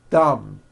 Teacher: My tongue came out, but there was never any air friction.